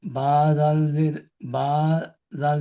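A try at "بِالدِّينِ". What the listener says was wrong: এটা জাল নয়, দাল, বা দাল জের বিদ।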